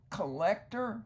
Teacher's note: here we see the N change to an L because of the L after it